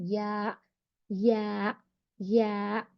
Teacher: यहाँ पर देखिए टच होके हट जाता, या अदा होता है। मिडिल पार्ट का हिस्सा जो है ऊपर पैलेट पे टच होगा टच होने के बाद वो थोड़ा इमीडिएटली हट जाएगा, यानी या या अदा होता।